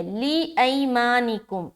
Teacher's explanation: یا ساکن سے پہلے دیکھیں زبر ہے، نرمی کے ساتھ ادا کریں گے اور معروف کا بھی خیال رکھنا ہے اور لمبا نہ ہو اس بات کا بھی خیال رکھنا ہے۔